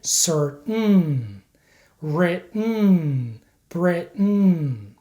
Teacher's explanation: the way to pronounce this sound is by not releasing the T sound so keep your tongue just behind the top front teeth and then add the n Sound which is a nasal sound so again make sure that you don't release the T sound · that you don't release the T sound so don't say Sir in American English you have to hold the t sound